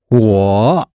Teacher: I or me, third tone.